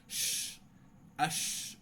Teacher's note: সিন উচ্চারণ করছি এটা কিন্তু শীষ না এটা হচ্ছে ফিসফিসানি শি শুধু বাতাসের ফিসফিসানি হবে কি হবে না শীষ হবে না শুধু ফিসফিসানি প্রকাশ পাবে